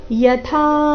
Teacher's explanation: ಯಥಾ ನಲ್ಲಿ ಥಾ ಮಹಾಪ್ರಾಣ ದೀರ್ಘ